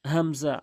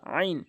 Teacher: হামজা হলকের শুরু থেকে আইন হলকের মাঝখান থেকে